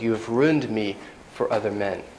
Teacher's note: emphasis on ruined you have ruined me for other men so the other men is kind of less important information there i'm letting the intonation go down · The intonation goes down there, kind of like the hamnida in Korean, because I'm putting the main stress on ruined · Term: sentence stress